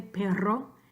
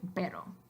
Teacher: Then you have your two sounds that you associate with the single R and the double R in Spanish. So the vibrante múltiple is your rolled R, your R. Then your vibrante simple is your regular one R